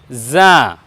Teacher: যা বর্ণকে আমরা উচ্চারণ করব জিহ্বার আগে এবং নিচের দাঁতের সামনের দুই দাঁতের পেটের সঙ্গে লাগিয়ে বলবো